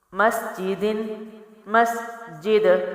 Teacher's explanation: دال جو ہے باؤنسنگ لیٹر ہے تو میں نے اس کو وقف میں حرکت دی